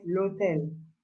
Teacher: L'hôtel, we don't say le hôtel, we say l'hôtel. Because the H here, we don't pronounce the H.